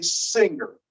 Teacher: some people will insert that G in there and they will say singer, which sounds a little strange to most of us, but it's another insertion.